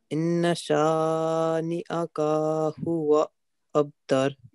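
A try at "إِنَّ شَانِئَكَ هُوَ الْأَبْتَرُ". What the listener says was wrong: Is there any alif after ka? Is only 1 second, you see? Look, this is fatha, only 1 second.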